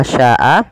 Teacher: Maka apabila ada satu hamzah, ada bacaan mad tabi'i bertemu dengan hamzah dan hamzah tersebut pada satu kata, maka dinamakan dengan mad wajib muttasil. Sya-nya wajib dipanjangkan sepanjang 4 harokat.